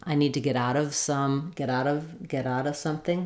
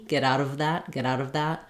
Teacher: a lot of times the word of we drop that V and we just make the uh sound